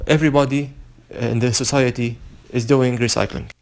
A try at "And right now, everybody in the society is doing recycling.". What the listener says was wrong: Be careful of your pacing. You almost got back into that trap that you did on the last two practice tests, where you had too many of those short pauses